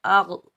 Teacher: غین، را اور قاف، یہ تینوں حروف مستعلیٰ میں سے ہیں تو ان تینوں کو ہم موٹا پڑھیں گے